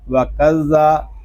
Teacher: واو زبر وا، کاف زال زبر کز، وَکَز، زال مشدد ہے، کاف کو ہم زال کے ساتھ ملا کر پڑھیں گے، زال زبر زا، وَکَزَّا، زال یہ حروف لسابیہ میں سے ہے، اس کو ہم نرمی کے ساتھ پڑھیں گے، اس میں سختی نہیں کریں گے، اس میں سیٹی کی آواز نہیں آنی چاہیے